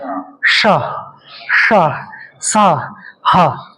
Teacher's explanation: इन चार वर्णों को उष्म वर्ण भी बोलते हैं। उष्म वर्ण जब बोलोगे आप इनका उच्चारण करोगे श स ह तो आपके अंदर से गर्म वायु आएगी